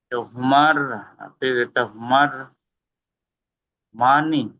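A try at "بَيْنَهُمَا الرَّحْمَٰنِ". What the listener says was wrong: মানে হুমার, এখানে আরেকটা র আছে। রাহ। র হাজাবার রহ।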